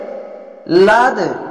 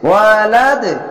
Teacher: শেষ অক্ষর মনে মনে সাকিন দিয়ে লাদ এভাবে ধাক্কা মেরে নিচে সাউন্ড আসবে। ওয়ালাদ এভাবে ধাক্কা মেরে কলকলা করবেন।